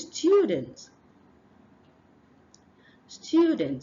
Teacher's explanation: we have a hidden yes sound after the T so we have this is a consonant cluster hidden consonant cluster